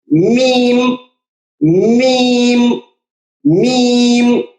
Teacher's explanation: होठों का खुश्क हिस्सा दोनों को आप मिलाएंगे तो मीम अदा होगा